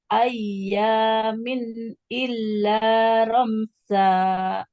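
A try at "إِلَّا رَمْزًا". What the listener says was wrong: Illa romza. Zazizu. tidak mengalirkan nafasnya untuk huruf zai.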